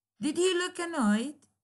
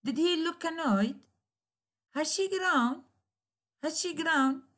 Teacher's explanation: Both operator and subject usually receive emphatic stress to show the surprise, exclamation.